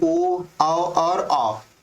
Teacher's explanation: जब बोलोगे तो आपका मुख क्या हो जाएगा मतलब आपका जो होठ होगा वो लगभग गोल संरचना में हो जाएगा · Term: वृत्त मुखी स्वर